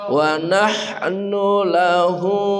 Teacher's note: Nunya pendek enggak ada wau